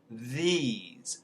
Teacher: there's also voiced th that uses the voice box